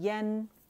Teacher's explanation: امالہ نہیں کرنا، زبان کا درمیانی حصہ ہم نے ریز نہیں کرنا